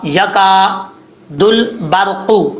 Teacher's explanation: یہاں پر با کے بعد جو را ہے، را ساکن سے پہلے زبر ہو تو را پر پڑھا جاتا ہے، یہاں پر را کو پر پڑھیں گے، یعنی موٹا پڑھیں گے۔